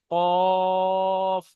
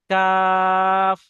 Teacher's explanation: আছে তো আমরা যে অক্ষরটা পড়লাম এটা কফ পরিষ্কারভাবে উচ্চারণ করবেন কফটা গলার ভিতর থেকে আসে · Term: বড় কফ